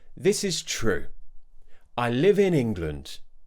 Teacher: Taking that tone down at the end of your statement sounds like you strongly believe in what you've said. It shows confidence in what you've said. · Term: falling tone